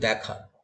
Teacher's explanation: আমরা উচ্চারণ করি দেখা, উচ্চারণটা তো এ হচ্ছে না, অ্যা হচ্ছে। এইরকম অ্যা ধ্বনিটা কিন্তু আমরা বাংলায় অনেক ব্যবহার করি।